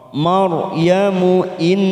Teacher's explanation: Ra sukun yang didahului fathah kita baca tafkim.